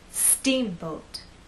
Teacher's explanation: the second part to be softer let's try that steamboat now we also need to make that first part longer and then the second part will be shorter · I want the first part to be loud in the second part to be softer let's try that steamboat now we also need to make that